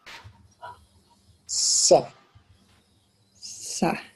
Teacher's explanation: sa is the tongue extended horizontally, just like in na.